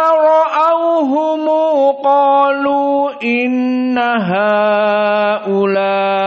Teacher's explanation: Mad Al munfasil dibaca dengan qasr hanya dua harakat